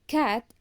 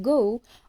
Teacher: are verer because the back of the tongue touches the vum the C Sound is voiceless meaning the vocal chords do not vibrate during articulation while the G sound is voiced meaning the vocal cords do vibrate